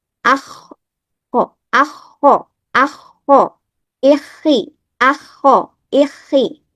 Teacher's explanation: Ketika kho bersyadah juga dibaca dengan hamas dan rohwah. Udaranya dan suaranya mengalir.